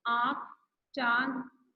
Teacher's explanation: अनुनासिक चंद्र बिंदु का उच्चारण नाक और गले दोनों से होता है